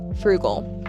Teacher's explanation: Frugal with an emphasis on the first syllable.